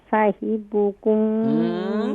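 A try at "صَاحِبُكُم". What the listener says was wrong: اماں جی صاد کو کیسے ادا کریں گے؟ صاد کو مزید فل ماؤتھ کیجئے.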